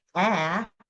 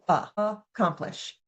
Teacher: So, let's take a look at some schwas in action, replacing typical vowel sounds with a schwa sound. In the word accomplish, the short a, which should say a, is changed to uh.